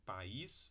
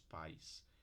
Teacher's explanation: país, duas sílabas, e pais, ditongo